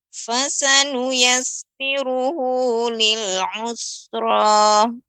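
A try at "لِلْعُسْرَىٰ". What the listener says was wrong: masih agak terasa. Us. Lebih banyak lagi, lebih diperbanyak desisnya. Usra.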